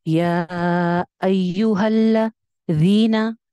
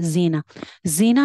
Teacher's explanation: जाल जो है ये सॉफ्ट लेटर है, बगैर सीटी के। और मैंने बताया था कि ये मिलती जुलती आवाजों वाले हरूफ में से है, यानी कि जाल और जा की साउंड मिलती है।